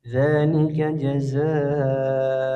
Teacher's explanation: Ya, za-nya dipanjangkan di sini. Mad wajib muttasil.